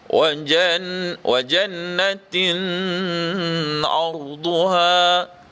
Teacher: Kalau kita tengok di sini, yang mana dengung, iaitu yang kena dengung pada jannah itu. Jannah itu adalah hukum wajibul gunnah, wajib dengung, maka kena wajib dengung. Tin arduha ini, ya, tanwin bertemu dengan ain, hukum izhar halqi, tidak boleh dibaca dengung.